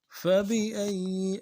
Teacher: حمزہ کو یا کے ساتھ ملانا ہے، یا کے اوپر تشدید زور دیں گے